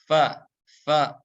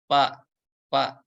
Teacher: dari ujung gigi seri atas kita ya menempel ke perut bibir bagian bawah ya yang belakangnya yang basahnya. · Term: huruf fa